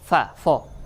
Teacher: আরবিতে ফা উচ্চারণ মানেই উপরের দাঁত নিচে ঠোঁট